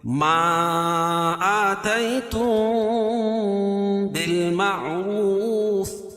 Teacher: بال معروف لکھا لیکن الف نہیں پڑھی جائے گی. بالمعروف، وقف کی صورت میں یہ مد عارض وقفی ہوگا.